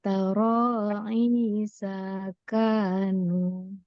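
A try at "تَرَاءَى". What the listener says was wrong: Sa-nya kurang panjang.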